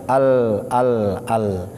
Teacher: Tapi pada prinsipnya lam ini adalah hurufnya tipis. Adapun tempat keluarnya dari tepi lidah ujung depan ada tepinya itu nempel ke gusi yang bahagian atas. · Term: huruf lam